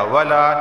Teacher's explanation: لام الف زبر لا، اسے ایک الف کے برابر کھینچ کے پڑھا جائے گا